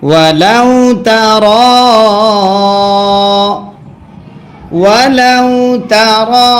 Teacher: মাদ্দে আসরের বামে লম্বা হামজা যদি হয় তিন আলিফ টানতে হয়। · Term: মাদ্দে মুনফাসিল